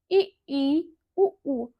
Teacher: जिन स्वरों का उच्चारण मुख द्वार सबसे कम खुला है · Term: सम्रत